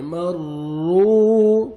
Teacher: را مشدد ہے، را کو آپ نے موٹا کر کے پڑھنا ہے، را کو پر کریں گے